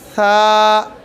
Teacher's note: ऊपर वाले दांतों के अंदरूनी किनारे पर ज़ुबान का सिरा रख कर पढ़ेंगे।